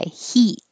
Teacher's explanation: this is the e your tongue is very high